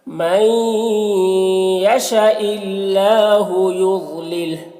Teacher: یضلل ضاد کو پر پڑھیں گے